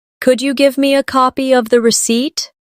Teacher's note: Could you becomes could ya in casual speech.